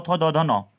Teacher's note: दंत्य क्या होता है दोस्तों? मैंने आपको बताया था, जिसमें आपकी जीभ दांत को टच करती है